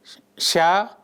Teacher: The consonant sa is classified as a voiceless palatal fricative. Articulation involves the formation of a narrow constriction between the front portion of the tongue and the hard palate through which air passes with audible friction. The vocal folds remain apart, resulting in the absence of voicing.